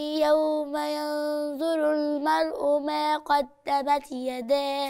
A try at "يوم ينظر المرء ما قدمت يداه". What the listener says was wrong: فين الهمس؟